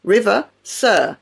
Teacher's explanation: For example, the final R in river or sir is silent.